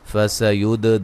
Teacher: دال پہ قلقلہ کریں گے